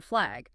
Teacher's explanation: you still hear both individual sounds, they just slide together quickly, like the S and T in stop, ST, or the F and L in flag. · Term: consonant blend